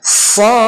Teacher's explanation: Nah, kita baca 6 ketukan ya, dan huruf terakhirnya ini memantul karena do. Jadi bukan kita baca so ya, tapi sad.